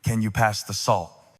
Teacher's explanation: Practice ending with a lower note. Speak as if you are placing a period, not a question mark.